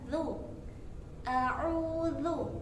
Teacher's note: Dzal di sini bermakhraj pada ujung lisan bertemu dengan ujung gigi seri atas. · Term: huruf dzal